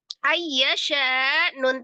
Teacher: nun sukun bertemu dengan huruf ya idgham bi gunnah. Diidghamkan disertai dengan dengung.